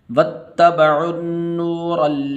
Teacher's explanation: واو کو آگے تا کے ساتھ ملانا ہے